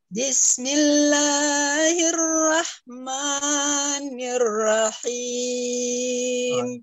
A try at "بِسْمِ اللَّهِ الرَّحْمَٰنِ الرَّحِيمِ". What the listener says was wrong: أنت هنا لا تزيد الماد يعني بسم الله الرحمن هذا خطأ 3 خطأ 2 فقط 2 بسم الله الرحمن الرحيم. طيب هكذا هذا يسمى مد طبيعي حركتان.